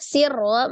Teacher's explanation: Ro-nya double ya, ada 2 sirro, maka ro-nya dibaca dengan tebal